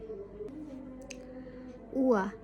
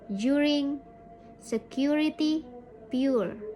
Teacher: our mouth goes from being almost closed with slightly rounded lips like we are going to kiss someone, u, to being slightly open with relaxed lips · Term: ua sound